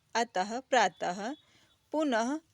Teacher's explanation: अह विसर्ग का उच्चारण ह के समान होता है।